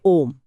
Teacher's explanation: प्लुत तिगुना समय जैसे ओम